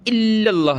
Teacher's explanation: اس کو الا اللہ جما کر لام کو پڑھنا ہے تشدید کی وجہ سے۔ لفظ اللہ کو ہم نے یہاں موٹا کرنا ہے، نہ کہ پتلا۔